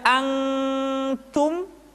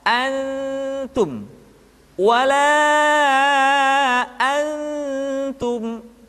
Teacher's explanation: posisi lidah sudah berada pada makhraj huruf ta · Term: ikhfa